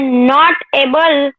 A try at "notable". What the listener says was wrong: Not able आप बोले ना, ऐसे नहीं, नोटेबल बोलना है साथ में. नॉट एबल मीन्स क्या होता है पता है?